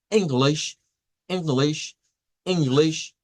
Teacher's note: esta es la near close, near front, unrounded vowel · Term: I cortas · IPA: /ɪ/